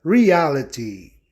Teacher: Observem em reality o ditongo crescente em A, para A ser ouvido de forma tônica, né? Incidindo então na regra, ok, de proparoxítonos.